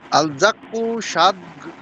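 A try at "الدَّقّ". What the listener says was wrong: আদাক্কু, আদাক্কু, দাল, দাল দিয়ে।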